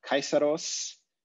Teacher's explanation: in the word kaiseros you have a diphthong right here so you have an ah sound with a little e at the end of it